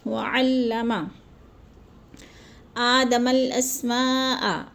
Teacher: اسماء میں جو ہے مد متصل ہے، 4 الفی مد ہے۔ حروف مدہ کے بعد حمزہ اسی کلمے میں آ گیا ہے تو مد متصل کو 4 حرکات کے برابر ہم نے لمبا کر کے پڑھنا ہے۔